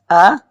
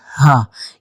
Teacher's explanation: الف کا مخرج اور ہا کا مخرج ایک ہے۔ یہ حلق کے شروع سے نکالے جاتے ہیں۔